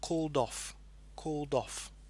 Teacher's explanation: The D sound connecting with the O sound here. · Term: connecting sound